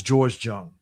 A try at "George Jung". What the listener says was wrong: You know, you're pronouncing the J like GIF and GIF and all that crap like that.